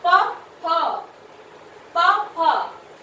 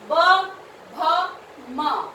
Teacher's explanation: जिनमें हमारे होठ आपस में मिलते हैं, जुड़ते हैं, उन्हें हम क्या कहते हैं, औष्ठ्य। देखिए उ, ऊ, हमारे होठों की मूवमेंट हुई ना, प, फ, प, फ, उसके बाद है ब, भ, म, तो आपके होठ जुड़े आपस में मिले, ठीक है, और जो इनको होठों का इसमें जो है इस ध्वनि में विशेष योगदान है, तो इसलिए इनको औष्ठ्य बोलते हैं हम।